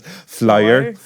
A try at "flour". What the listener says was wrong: You still got a Y. You still got a Y in there.